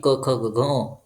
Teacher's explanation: म्हणजे क वर्ग ह आणि विसर्ग यांचा उच्चारण स्थान असत कंठ ज्यावेळेस आपण या वर्णांचे उच्चारण करतो त्यावेळेस जी हवा आहे ती कंठामधून बाहेर येते